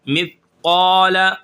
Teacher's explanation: اب قاف کو ہم کھینچ کر پڑھیں گے ایک الف کے برابر اور موٹا کریں گے. یہ حروف مستعلیہ میں سے ہے.